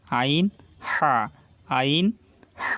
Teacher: আইন, হা, আইন, হা, এই দুইটি হরফ কণ্ঠনালীর মাঝখান থেকে উচ্চারিত হয়, আমাদেরকে চেপে বলতে হবে